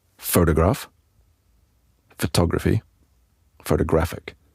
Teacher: We're moving the stressed syllable back so that those 3 words actually sound really different. · The fact that, for example, we don't say photograph, we actually say photograph, makes it easy to separate that word from another word that's very close, like photographer or photographic. We're putting a stress on a different syllable in each word, which means that they actually sound really different.